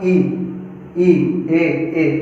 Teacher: तो हमारे जीभ का जो आगे वाला हिस्सा होता है ना, नोक जीभ की, वो क्या होती है? उठ जाती है इस पर या फिर नीचे जाके रखी हो जाती है, इसलिए इनको जिह्वा का अग्रस्वर वाला भाग, इनको इन वर्णों को कहा जाता है।